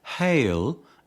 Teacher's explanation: Unlike the previous examples, the first sound of hail is a glottal consonant produced at the glottis without contact between articulators